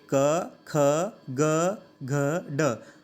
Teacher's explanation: आप इनका उच्चारण करके देखिए तो हमारे कंठ से आवाज़ निकलती है।